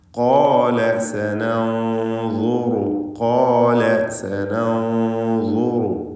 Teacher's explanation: എന്നാൽ സനൻദുറു എന്ന് പറയുമ്പോൾ സാക്കിനത്തായ നൂൻ ളാഇന് മുമ്പിൽ വന്നിട്ടുണ്ട്. ഇഖ്ഫാ ഹഖീഖി എന്ന നിയമം അനുസരിച്ച് ആ സാക്കിനത്തായ നൂനിനെ മറച്ചു മണിക്കണം, അവ്യക്തമാക്കി മണിക്കണം. ളാഇന് മുമ്പിലാണ് വന്നത് എന്നതുകൊണ്ട് മണിക്കലിൽ തഫ്ഖീം വേണം.